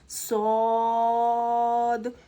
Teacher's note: صاد حرف صفیریہ میں سے آتا ہے تو اس میں ہم سیٹی کی آواز پیدا کریں گے